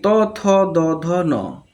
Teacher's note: ত থ দ ধ ন, এটা দন্তধ্বনি